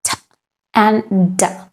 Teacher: The tongue is right behind the teeth on the ridge, the alveolar ridge. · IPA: /t/ /d/